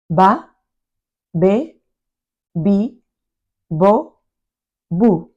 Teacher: The V sound in Spanish is pronounced the same as the B sound. Especially in Spain, it's a bilabial sound, not labiodental like it is in English.